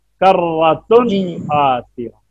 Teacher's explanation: غنہ یعنی ہاں یعنی جب مخرج سے نکلے گی نا تنوین، یہی میں پڑھا رہا تھا، تو ناک میں آواز ضرور جائے گی لیکن ایسے جائے گی کہ جا کے فوراً باہر آ جائے گی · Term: غنہ آنی